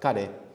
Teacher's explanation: So that's K-A-R-E, but the R is somewhere between L and R, like kare.